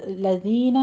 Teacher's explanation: लज़ीना में दाल नरमी से होगा, यहाँ आपने सीटी आवाज़ नहीं अदा करनी